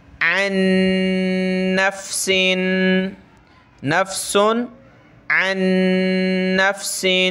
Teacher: یہ نون پہ تشدید ہے، اس وجہ سے ہم نے ناک میں آواز پیدا کرنی یعنی غنہ کرنا ہے